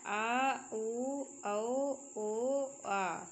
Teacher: पश्च स्वर जिन स्वरों के उच्चारण में जीभ का पश्च भाग काम करता है उन्हें पश्च स्वर कहते हैं।